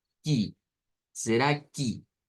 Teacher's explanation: Es la R suave del español, de hecho, la que debemos de usar. Luego, la palabra que del español suena con E, pero en el portugués suena con I · las es al final de las palabras se convierten en is